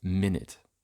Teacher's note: a schwa turns into the kit vowel as in minute. Stressed schwas are lowered.